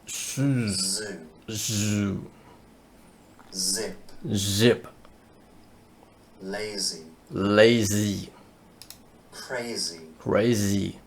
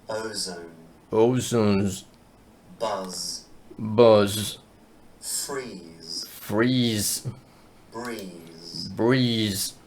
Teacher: a Z sound is made by creating a narrow space between the blade of your tongue and your alveolar ridge. The jaw is loose, the lips and the teeth are apart.